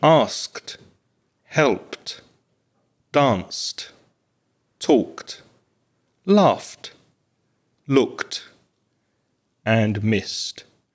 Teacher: the air is coming through your teeth and it's not activating the voice box in your throat. So there's no vibration in your in your throat or on top of your head if you put your hand there. · all of those verbs are unvoiced. So we just add a t sound. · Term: unvoiced consonant